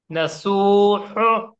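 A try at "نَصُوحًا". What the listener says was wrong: ये हू नहीं होता, ये सीने वाला है, बीच हलक का नहीं होता, मोटा बोलना है इसको, बोल्ड। मोटा मोटा बोलिए, सख्ती से नहीं, नरमी से बोलिए उसको। नसूहु, हु, हु, अल्लाहु। हाँ, वो हा जो निकला ना वही छा है।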